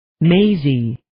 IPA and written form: 'meɪzi (Maisie)